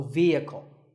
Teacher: next word is vehicle it's often pronounced wrongly as vehicle but the e is a long and the H is silent · the E is a long vowel and the H is silent